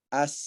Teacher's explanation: Adapun rohwah mengalir. Ya. Kita baca huruf misalnya as. Nah, mengalir sinnya itu.